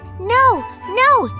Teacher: your lips move and the sound changes from o to oo · That means they glide from one sound to another. When you say the English word no, your lips move and the sound changes from O to U.